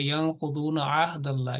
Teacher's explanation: ادنا حلق جو لوور پارٹ ہے، وہاں سے آپ نے ہا ادا کرنا ہے. تو اس کے اوپر محنت کریں.